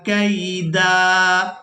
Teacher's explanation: اب یہاں پر آپ لوگ علامات وقف دیکھ رہے ہیں، وقف کریں گے تو وقف کی صورت میں ہم نے دال پر ایک زبر ادا کرنی ہے اور اس دال کو ایک الف مقدار کھینچ کر ادا کریں گے